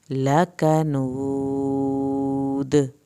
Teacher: جب آخر میں لکنود کریں گے دال کو خوب ہلانا ہے، دال پہ قلقلہ ہو رہا ہے